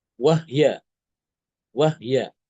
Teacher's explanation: Nanti Imam Al-Kisai membaca dengan mensukunkan ha, wahya, wahya.